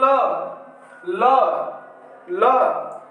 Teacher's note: और आगे चलते हैं पार्श्विक, पार्श्विक व्यंजन, पार्श्विक व्यंजन हमारा ल होता है। ल को उच्चारण करते समय हमारा जो जीभ होता है, जीभ के दोनों बगल से वायु निकल जाती है।